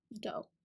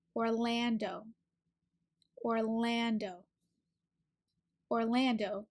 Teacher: a sound is ah like apple it's open in the back the last syllable is do you don't have to round your lips as much it is that o sound